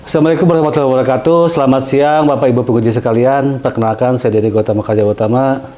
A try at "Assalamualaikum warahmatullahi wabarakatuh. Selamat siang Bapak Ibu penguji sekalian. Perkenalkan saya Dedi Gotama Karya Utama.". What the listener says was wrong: terlalu datar heeh. Intonasi, ekspresi gitu.